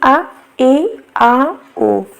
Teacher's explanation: जिन स्वरों के उच्चारण में मुख द्वार आधा खुलता है वह आपका अर्ध विवत हो जाता है जैसे कि आ ए